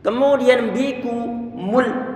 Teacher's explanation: di sini ku dia ditommahkan, berarti perlu untuk kita monyongkan bibir kita. Kemudian bikumul, ini pun sama, perlu kita monyongkan.